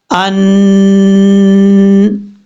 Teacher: اب یہاں پر یہ یاد رکھیے گا نون کے اوپر شد ہو یا میم کے اوپر شد ہو تو غنہ کیا جاتا ہے ایک الف کی مقدار۔ اب یہاں پر نون کے اوپر شد ہے اس لیے غنہ کریں گے